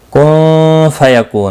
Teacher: نون ساکن کے بعد حروف اخفاء کا فا، اخفاء حقیقی ہوگا، کو واو مدہ ہے اور نون ساکن پڑھا جائے گا، وقف بالاسکان ہوگا وقف کی صورت میں، اور 3 سے 5 الف کے برابر کھینچ کر وقف کریں گے۔